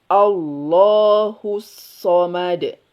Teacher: Tipiskan hamzahnya di rahang tipis seperti tersenyum.